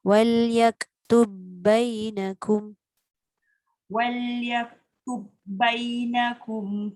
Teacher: Ba dengan ba tak boleh bunyikan qalqalah.